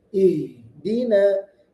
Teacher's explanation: perhatikan huruf H di situ. Harus dibaca jelas. Ada hamasnya. Mengalir suaranya.